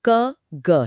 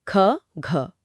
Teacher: हर परिवार का पहला और तीसरा अक्षर अल्प प्राण, क ग है और दूसरा और चौथा महाप्राण ख घ। अच्छा। महाप्राण में एक ह की ध्वनि अपने आप जुड़ जाती है।